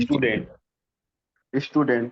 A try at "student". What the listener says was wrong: ठीक है, बहुत हद तक सही है, लेकिन फिर से बताता हूँ, ड और न के बीच में डे करने की आदत बंद करिए। डे नहीं है वो, स्टूडेंट।